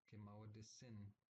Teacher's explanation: You notice how the SH sound is just S